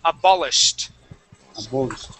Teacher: we're going to jump right from that that sh sound into the T